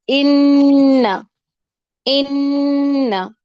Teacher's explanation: اس کا رجحان ناک کی طرف زیادہ ہوتا ہے، ان ان اور منہ کی طرف کم ہوتا ہے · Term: غنہ